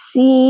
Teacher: سین کو یا سے ملا کر ادا کرنا ہے تو سی بنے گا. تو جو آخر میں ای کی آواز آ رہی ہے وہ جوف دہن سے ادا ہو رہی ہے.